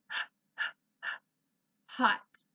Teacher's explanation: We don't use our voice box, we use the air.